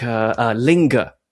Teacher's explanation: the E vowel is being raised in the same environment before a nasal. It's being raised up to become I. It's going from E to I when it comes before a nasal sound. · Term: pin-pen merger